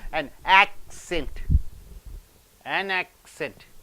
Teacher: when it comes as a noun the first syllable should be stressed